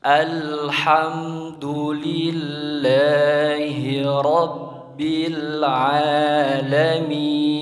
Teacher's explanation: Ketika mengucapkan al, itu adalah hukumnya adalah alif lam qamariyah, maka harus jelas karena alif lam qamariyah itu bertemu dengan huruf qamariyah yaitu huruf ha, maka dibacanya harus jelas